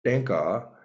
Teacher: if you put your hand in front of your mouth you say tenka you would not feel any air coming out of your mouth